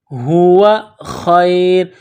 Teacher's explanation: ہوا خیر، ہوا خیر، خا کو یا کے ساتھ ملانا ہے، را کے اوپر دو پیش تنوین ہے تو یہاں پر جب وقف کریں گے تو را کو سائلنٹ کریں گے